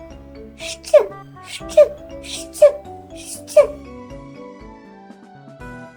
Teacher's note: Він звучить одразу двома звуками разом: ш і ч. Тому, коли ми кажемо щ, насправді ми говоримо ш ч щ. · Ми не чуємо голосок, тільки шум, тому цей звук глухий. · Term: звук щ